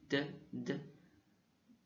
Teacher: c'est un D sans souffle en français · Ensuite, on a le D, ça fait D. Et c'est un D sans souffle